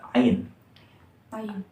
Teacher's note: Ain itu kan dia itu seperti dekatnya akar lidah gitu ya dengan rongga, kerongkongan